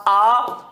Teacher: आ बोलने पे मुख पूरा खुलता है, इसलिए इसको कहते हैं विवृत स्वर